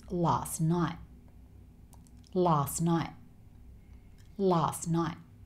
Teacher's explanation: And here, the two words last night, the t sound at the end of both words isn't really said. So this becomes last night.